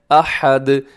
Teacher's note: آخر میں دال کو آپ نے ہلانا ہے، اس کی آواز کو ڈبل کرنا ہے